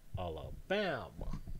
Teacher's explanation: the stressed syllable is the penultimate syllable the one that's before the last one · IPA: [ˌæləˈbæmə]